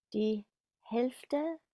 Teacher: Now the L sometimes can be a bit soft. Even natives sometimes skip it.